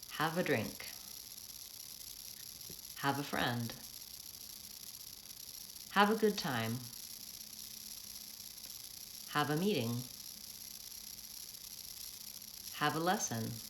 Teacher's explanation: have a is fast, and friend and drink, the noun at the end of the phrase, is stretched. It has the stress. · on the word that I'm filling in the blank, that's usually long, and have a goes by pretty quickly. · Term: intonation pattern